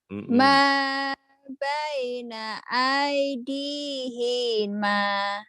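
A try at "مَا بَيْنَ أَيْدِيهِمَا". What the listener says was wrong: I-nya pendek. Ayo ulang lagi. Hima. Hima. hima. Iya, hi-nya pendek. Hi-nya pendek.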